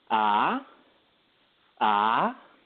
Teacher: the second tone is a rising tone so it's like you're raising your voice in a form of a question and it sounds something like this ah ah and then the